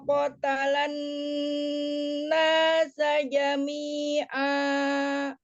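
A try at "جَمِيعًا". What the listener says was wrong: Jami'a. Ain ya, bukan hamzah.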